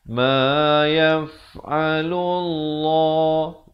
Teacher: lafz jalalah ini dibaca tebal dua harakat